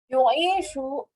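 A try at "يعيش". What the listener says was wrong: Jangan you, jangan ya. Ya, aslinya berpenyakit 3 huruf saja. Asya. Coba ya isu terus.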